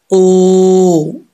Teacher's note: वाव साकिन से पहले पेश हो तो वाव मद्दा होता है, तो यहाँ पर एक अलिफ की मिकदार लंबा करेंगे इसको, ऊ।